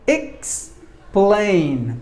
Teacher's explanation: there are two syllables in this word and we have to stress the second syllable